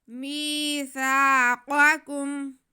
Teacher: یا ساکن سے پہلے زیر ہو تو یا مدہ ہوتی ہے، ہم میم کے آواز کو کھینچ لیں گے